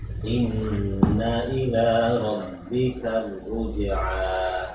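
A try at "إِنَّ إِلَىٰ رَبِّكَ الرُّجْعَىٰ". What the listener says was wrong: kurang dengungnya innanya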